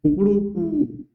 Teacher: कु जो लास्ट वाला हो वो लंबा चलेगा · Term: लंबी ध्वनि वाला